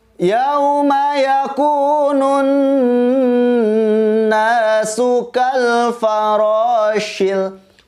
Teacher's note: Sama seperti surat sebelumnya, ada alif lam syamsiyah, kemudian huruf nunnya bertasydid, maka kita bacaannya harus ditahan 2-3 harokat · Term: nun bertasydid